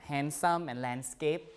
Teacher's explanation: the D is also lost